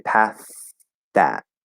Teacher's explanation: you do that first voiceless th and then just close it into that